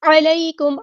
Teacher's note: عین کو وسطی لیکن مڈل تھروٹ سے ادا کرنا ہے ، یا لین آ گیا تو نرمی سے موڑیں گے، علیکم،